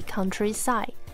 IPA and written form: ˈkʌn.tri.saɪd (countryside)